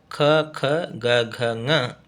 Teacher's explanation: ಘ ನ ಈ ಅಕ್ಷರಗಳು ಕಂಠ್ಯದಲ್ಲಿ ಅಂದ್ರೆ ಕಂಠದ ನಮಗ ಕಂಠ ನಮ ಮಾತಾಡದು ಕಂಠ ಅಲ್ಲಿ ಅಕ್ಷರಗಳು ಉಚ್ಚಾರವಾಗತಕಂತ ಸ್ಥಳ ಆಗಿರುವುದರಿಂದ ಅವುಗಳಿಗೆ ಕಂಠ್ಯ ಅಕ್ಷರಗಳು ಅಂತ